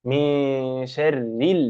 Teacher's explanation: نون ساكنه وجاء بعدها حرف الشين فهذا يسمى اخفاء حقيقيا